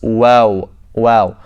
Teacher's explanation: waw again, pronounced from the lips, by circling the lips